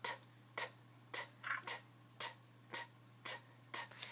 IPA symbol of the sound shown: t